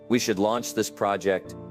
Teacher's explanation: That rising tone at the end makes you sound unsure, even when you're not. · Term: up speaking